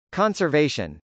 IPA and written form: k.ɑnsɚvˈeɪʃən (conservation)